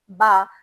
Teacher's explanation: बा को अदा करते वक्त हमारे जो दोनों होठ है वो आपस में चिपक गए थे। यानी मुंह बंद हो गया था।